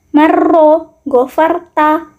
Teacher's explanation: secara istilah adalah bergetarnya ujung lidah dengan getaran halus yang diakibatkan dari sempitnya tempat keluar huruf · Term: at-takrir